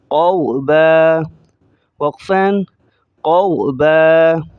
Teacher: قاف کو غاد کے ساتھ ملائیں گے تو دونوں کو موٹا کریں گے، اور اینڈ میں 2 زبریں ہیں با پر، تو با کو الف کے بقدر کھینچ کر پڑھا جائے گا